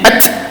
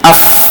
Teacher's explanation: ta mati lebih cepat kan bunyi at saja tapi kalau Fa mati AF bunyi dia agak panjang sikit